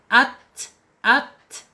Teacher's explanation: Kemudian secara sifat ya, sifat ada di alhams yaitu mengalirnya napas kita ketika ta ini harakatnya sukun